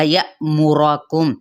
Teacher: या पे हम झटका देंगे क्योंकि हमजा साकिना है, यानी अलिफ के ऊपर जज्म की इलामत है तो इसको कहते हैं हमजा, ठीक है।